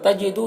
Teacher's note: दू में वाव मद्दा से 1 अलिफ के बराबर खींचेंगे